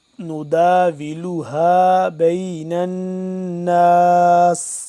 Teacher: نون مشدد ہے، اس پہ غنہ کریں گے